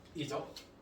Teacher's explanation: 뒤에 오는 초성, 네, 기역, 디귿, 비읍, 시옷, 지읒이 뭘로 바뀐다? 된소리로 바뀝니다